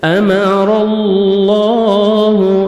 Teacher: را کو زبر ہے، را کو اپنے موٹا بھی کرنا ہے. آگے اللہ سبحانہ و تعالیٰ کا نام سے پہلے زبر آ رہا ہے، لام کو اپنے پر بھی کرنا ہے، موٹا بھی کرنا ہے اور 1 سیکنڈ کھینچیں گے، کھڑے زبر ہے.